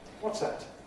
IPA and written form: ˈwɒts ˈæt (What's that?)